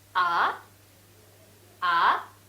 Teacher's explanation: the second tone in Chinese is rising tone